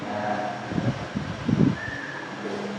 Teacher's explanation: Cara membacanya suara nun sukun atau tanwinnya dirubah menjadi mim sukun dengan tempo dengung yang dipanjangkan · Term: iqlab